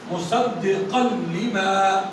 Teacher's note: لام اور را آ جائے تو پھر ناک میں آواز نہیں آتی, ادغام ہو جاتا